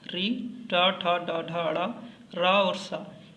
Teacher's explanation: री, टा, ठा, डा, ढा, ड़ा, रा और सा, इसका उच्चारण स्थान मूर्धा है। इस कारण से इसको मूर्धन्य सा भी कहा जाता है।